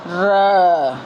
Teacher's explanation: वह ध्वनि जिनका उच्चारण करते समय जीभ गोल हो और कांपती हो। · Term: लुंठित